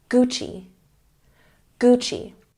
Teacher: Checking the pronunciation, we are stressing the first syllable.